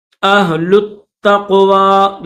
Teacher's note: لام کو تا کے ساتھ ملائیں گے، تا کو قاف کے ساتھ ملائیں گے، واو کے اوپر کھڑا زبر ہے، اہل التقوی، یا نہیں پڑھیں گے، یہ جو آخر میں یا خالی ہے یا نہیں پڑھی جائے گی۔